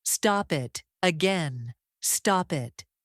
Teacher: The P connects smoothly to the vowel.